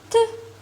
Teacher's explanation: T is a voiceless dental or alveolar stop.